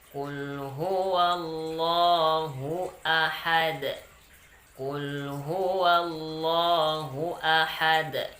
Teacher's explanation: Pada akhir kata ahad itu ada huruf dal. Dan kita wakaf di sana, maka namanya qalqalah kubra. Ada bunyi d-nya.